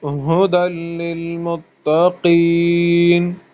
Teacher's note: मुत्तकीन में फिर जो कौफ है उसको मुंह भर के पढ़ना है